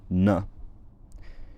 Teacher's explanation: the alveolar or dental nasal, with the soft palate lowered and the tip of the tongue at the gums or the teeth